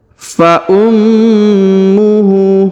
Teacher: atau dimatikan ya baik kita lanjut ke ayat berikutnya Fa ummuhu huruf mim atau huruf Ma ditahan dan ditekan karena terdapat tanda tasdid · huruf mim atau huruf ma ditahan dan ditekan karena terdapat tanda tasdid. Huruf H dibaca panjang 2 harokat karena berharokat U terbalik.